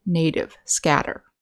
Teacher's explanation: So these two examples, native and scatter, we have the stress on the first syllable, but T is at the beginning of the unstressed syllable. So that's when it becomes the voiced sound,